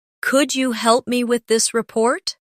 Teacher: The words help and report carry more weight in the sentence. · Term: stress